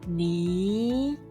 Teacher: Second tone is a rising tone. Start from a lower pitch and end at a slightly higher pitch.